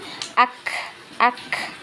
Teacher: sedangkan untuk huruf k dan ta itu lebih kuat hamas ya. Ada seperti suara desisan ya, desis ya